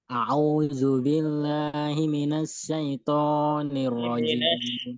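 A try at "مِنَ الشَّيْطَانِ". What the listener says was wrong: Minash pakai shin yang tebal. Shinnya kurang tebal, Pak.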